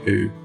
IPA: uː